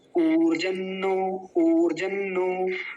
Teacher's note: और ऊर्जम नो भी बोलेंगे, वो भी गलत नहीं है, ऐसा नहीं कि वो गलत है, लेकिन जब एक साथ जुड़ेगा, एक प्रवाह से बोला जाता है एक श्रुति में, तो वो ऊर्जन्नो बन जाएगा